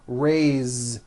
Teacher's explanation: even though it is spelled with an s it's pronounced with a voiced Z raise so we say I raise with a voiced Z ending